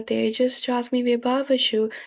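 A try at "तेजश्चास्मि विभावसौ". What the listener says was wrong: The ending is not Vibhavasu, it's Vibhavasav.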